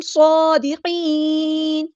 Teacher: صاد ہمارا heavy letter ہے، پورا ادا کریں گے اور حروف صفیریہ میں سے ہے. صاد پہ کھڑا زبر ہے تو مد اصلی کریں گے، دال باریک ادا کریں گے، اور قاف ہمارا ہیوی لیٹر ہے، پورا ادا کریں گے اور یہاں پہ نون کو ہم ساکن کر دیں گے وقف کرتے ہوئے، اور مد عارض بھی ہوگی.